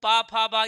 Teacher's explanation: छोटा उ, बड़ा ऊ, प, फ, ब इन सब में ओठ लग रहा है।